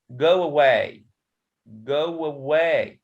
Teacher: So we can add here wah sound. So we can say it go away, go away. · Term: intrusion